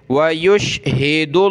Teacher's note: लफ्ज़ अल्लाह से पहले वाले वर्ड दाल पर पेश है तो लफ्ज़ अल्लाह को मोटा करेंगे।